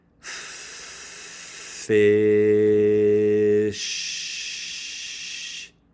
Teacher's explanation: I held the initial and final sounds for just as long as I held that middle vowel sound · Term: connected phonation